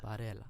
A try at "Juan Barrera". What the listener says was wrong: Barrera. No L. Barrera.